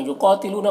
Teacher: قاف کو پر پڑھنا حروف مستعلیہ میں سے، اور یہاں پر الف مدہ ہے۔